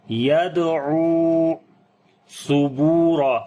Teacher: عین کو لمبا کریں گے، واو مدہ ہے یہاں پر · کو لمبا کریں گے، واو مدہ ہے یہاں پر، یدعو ثبورا، سا کو نرم پڑھیں گے، با کو لمبا کریں گے، واو مدہ ہے